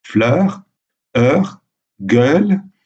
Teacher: Vous voyez que la prononciation est toujours ouverte parce que la syllabe est entravée. La voyelle est suivie par une consonne.